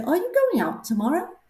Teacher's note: So when we ask a question, we're going to say, are you going out tomorrow? It's going to go up.